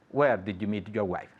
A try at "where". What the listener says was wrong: Okay, don't forget the pronunciation of where. Where, not where. No hay R, okay?